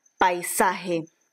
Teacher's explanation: tenemos como segundo ejemplo de diptongo una vocal abierta más una vocal cerrada